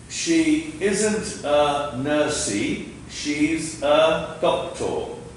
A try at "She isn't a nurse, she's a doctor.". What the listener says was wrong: That's close. She isn't a nurse, she is a doctor. The E in nurse is silent.